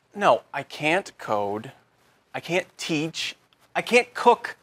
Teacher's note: Instead of pronouncing the T, your tongue just comes to a stop against the hard part of the roof of your mouth just behind the upper front teeth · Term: held T